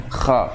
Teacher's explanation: Kalau hamas dimiliki kha, ya jadi udaranya mengalir, nggak ketahan.